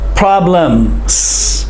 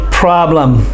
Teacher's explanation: they don't say the s at the end of the word